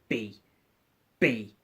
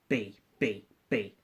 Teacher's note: okay now B is pronounced normally for your mouth moving and your lips come together B B and open up very fast